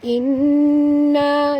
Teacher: Warna merah maknanya wajib dengung, wajib al-gunah. Inna, dengung 2 harakat, jangan panjang sangat dengungnya ya. Jangan baca inna, tak boleh ya, 2 saja.